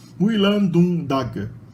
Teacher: o sufixo continuativo tag vira dag, porque ele está depois um N que é sonoro, então o T vira D, fica sonoro